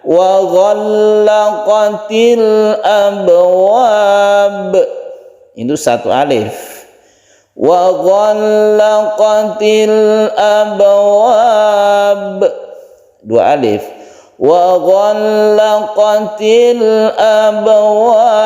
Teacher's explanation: Ketika kita berhenti di sini maka boleh 1, 2 atau 3 alif karena ini adalah mad arid lis sukun. Ada mad tabi'i, abwa ini mad tabi'i bertemu dengan ba yang disukun maka disebut mad arid lis sukun.